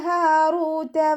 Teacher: ത മഹ്റജ് വരുന്നത് നമ്മുടെ നാവിൻ്റെ അറ്റവും മേലെ മുൻപല്ലിൻ്റെ മുരടും ചേർന്നിട്ടാണ്. ലൈറ്റാക്കിയിട്ട് ഉച്ചരിക്കേണ്ട അക്ഷരങ്ങൾപ്പെട്ടതാണ്.